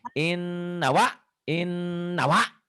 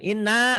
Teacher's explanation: In-nya ditahan, nanya dilepas.